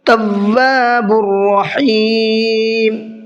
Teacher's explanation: را کو منہ بھر کے پڑھنا ہے، اور ہا کو حلق سے نکالنا ہے